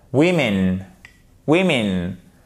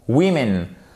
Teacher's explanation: Vous avez l'accent tonique qui est sur la première et le O et le E se prononcent à chaque fois comme un I court.